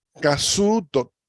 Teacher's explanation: Casuto es casutoru, pero que pierde la U, queda la L al final de palabra y se convierte en T.